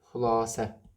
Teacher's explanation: İsim olanda vurğu düşür sonuncu hecaya və səs uzanması var.